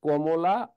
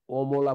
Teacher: কমলা বললে জিহ্বাটা লেগে যায় উপর দিকে, আর অমলা বললে লাগে না। তাহলে লাগাই দিলি ক, লাগাই দিলি ক, জিহ্বাটার উপর দিকে লাগাই দিলি ক, আর না লাগালি অ।